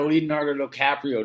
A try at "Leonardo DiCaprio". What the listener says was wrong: No, no, I think the first time you said DiCaprio or something, you added an O there. Just there. It's DiCaprio, but the first time you said it very weird.